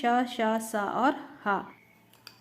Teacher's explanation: इनका उच्चारण एक प्रकार की रगड़ या घर्षण से उत्पन्न होता है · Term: ऊष्म व्यंजन